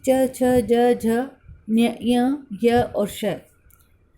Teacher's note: इनका उच्चारण तालु और जीभ से किया जाता है और इसीलिए इनको तालव्य कहा जाता है।